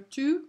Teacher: masculine singular tout. We do not pronounce the T.